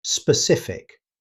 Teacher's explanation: Be sure to stress the -cif syllable.